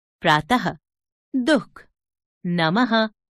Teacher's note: विसर्ग। इसका उच्चारण आधे ह की भांति होता है